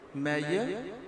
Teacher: Ya is the voiced palate alveolar fricatives.